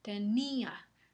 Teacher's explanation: La I y la A están en sílabas diferentes. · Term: hiato